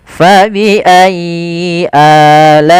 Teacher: atau bertemu dengan huruf mad bertemu huruf wau sukun atau ya sukun. Panjangnya untuk mad badal berapa harakat? Yaitu dua harakat.